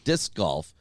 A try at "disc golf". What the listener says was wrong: It sounds like you're saying dick. but it's disc golf.